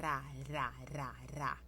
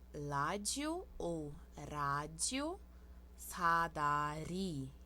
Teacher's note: esse R é R que a gente bate a língua no céu da boca atrás do dente